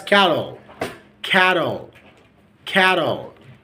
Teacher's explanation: the T became like D